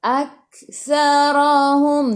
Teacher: Aktsarahum. Thafithu, hujung lidah keluar pada gigi depan.